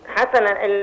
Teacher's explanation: الحاء برضو من حروف الهمس والسين من حروف الهمس كلهم مفتوحين